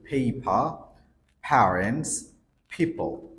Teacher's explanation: এই লেটার গুলো কোন ওয়ার্ডের শুরুতে আসলে তারা এই সাউন্ড গুলোকে অ্যাসপ্রেট করে বলে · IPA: /pʰ/